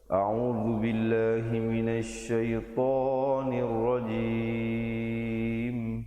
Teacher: ditutupkan mulut rapat menyempurnakan bunyi mim di akhir